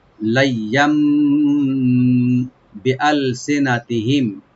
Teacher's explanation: দিয়ে, লাইয়াম, লাম ওপেন থাকবে, আর ইয়ার উপরে এখানে তানবিন আছে, তানবিনের পরে যেহেতু বা আসছে তো ওই তানবিনটা মিম সাথে চেঞ্জ হয়ে গুণা সহকারে পড়া হবে